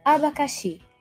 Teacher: na palavra abacaxi, a sílaba tônica é o xi.